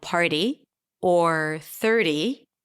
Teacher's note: the flap T appeared after an R